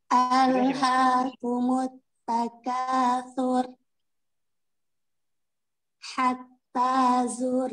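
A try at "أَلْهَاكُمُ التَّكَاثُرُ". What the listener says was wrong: Takasur. Majuin mulutnya. Jangan ditarik. Takasur. Jangan tur. Hati-hati di kata takasur, ya. Jangan ditarik lagi. Takasur, tidak. Takasur, lidahnya langsung dilipat ke gusi, ya.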